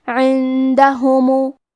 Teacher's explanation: کلمت عندهم میں نون ساکن ہے پھر حرف الدال ہے، دال حروف الاخفاء میں سے ہے تو ہم یہ حکم کو غنہ کے ساتھ ادا کریں گے